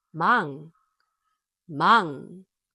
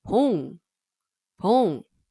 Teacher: What if 이응 is at the bottom of the block as a 받침? Then 이응 is no longer silent, but it sounds like ng, such as in sing. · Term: ng sound